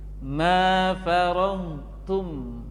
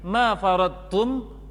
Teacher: maka dhad dibaca sempurna, tidak kurang sedikit pun sifatnya. Tidak boleh terpengaruh oleh ta. Dhad itu sifatnya kuat.